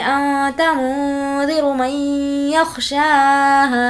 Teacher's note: نون ساکن کے بعد یا ہے اس لیے غنہ کریں گے